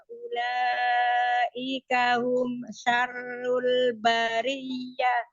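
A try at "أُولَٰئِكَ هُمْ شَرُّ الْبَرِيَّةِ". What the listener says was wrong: Mengalir ya, mim sukunnya tidak boleh dipisah, tidak hum syarrul, jangan.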